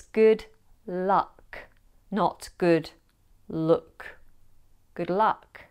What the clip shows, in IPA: gʊd lʌk